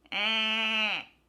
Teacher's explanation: your A squeezes into a bit of an E sound, but not all the way. · So it's a really, really subtle shift from A to A. Basically, because of the N, you're just pushing that sound even further up into your nose.